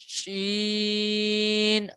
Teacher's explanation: basically श जो है यह मुंह में फैल के आवाज निकलेगी